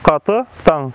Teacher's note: Устойчивое сохранение заднеязычных согласных «к», «г», свойственных общеногайскому народно-разговорному языку.